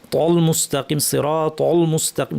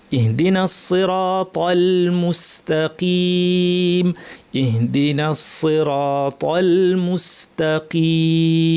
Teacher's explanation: ত ভারি কিন্তু এরপরে তলামটা পাতলা ভারি পাতলা